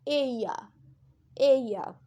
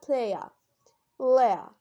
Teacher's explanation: ये ग्लाइड करेगा from one vowel to another vowel और then to the third vowel. और ये जितने तीनों वावल्स बहुत रैपिडली प्रोनाउंस होंगे बगैर किसी रुकावट के। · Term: ट्रिप्थॉन्स